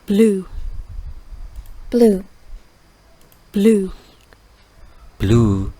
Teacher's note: blue, blue, blue, Blue. Sedikit lebih panjang dibandingkan dengan U biasa.